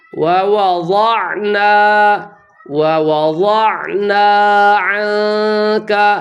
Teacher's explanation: یہاں ضاد موٹے حروف میں سے ہے لیکن اس کی وجہ سے واو کو موٹا نہیں پڑھنا